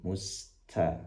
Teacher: pastikan sinnya dialirkan nafasnya lebih panjang t-nya jangan sampai ada hames atau nafas yang terdengar mengalir musta ya.